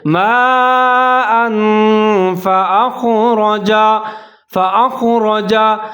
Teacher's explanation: जैसे माअन फ़अख़रजा, फ़अख़रजा हमजा के ऊपर ज़बर है, ख़ा साकिन है, इसको खा का आपने ख्याल करना है, इसको आपने मोटा पढ़ना है। उससे आगे रा के ऊपर ज़बर है, उसको भी आपने मोटा पढ़ना है, बारीक नहीं पढ़ना।